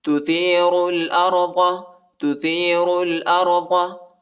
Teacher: را کو لام کے ساتھ ملائیں گے، الف نہیں پڑھا جاتا اور را کو موٹا پڑھنا ہے.